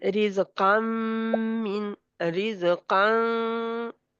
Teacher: नून की आवाज, उस नून की आवाज को नाक में ले जाना, नाक में- ये नाक से गुन्ना है।